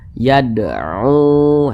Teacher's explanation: kemudian u dibaca panjang. Ini namanya adalah mad jaiz munfasil.